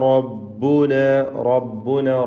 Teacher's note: റായിന് തഫ്ഖീം കൊടുക്കുക, പൂർണ്ണമായ നിലക്ക് തടിപ്പിച്ചുച്ചരിക്കുക.